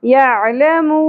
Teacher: عین ساکن عین کو وسط حلق سے ادا کرنا ہے مد عارض وقفی کا اور نون ساکن کی اواز کا دھیان